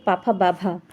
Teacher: पा फ ब भ म यह हमारे किस में आते हैं? ओष्ठ में आते हैं।